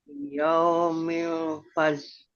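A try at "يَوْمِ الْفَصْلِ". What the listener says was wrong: Ada L-nya. Fasl. Iya, S-nya biasa. Fasl.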